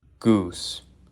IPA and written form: gʊus (goose)